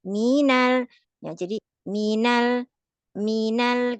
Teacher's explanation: untuk menjaga minya tetap cuman satu harokat saja. Minal, kalau minal itu lebih dari satu panjangnya.